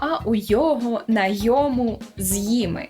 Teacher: зникає оце от протетичне ни